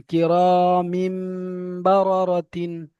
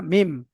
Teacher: তানবিনে, মিমের নিচে তানবিনের পরে বা এসেছে, তাই একে তাই তানবিনকে মিমের দ্বারা পরিবর্তন করে এক আলিফ পরিমাণ গুণনা করে পড়তে হবে।